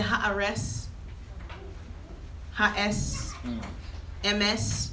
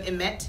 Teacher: Ashkenazis don't say T's. They say S. That's why it sounds like they talk with a lisp.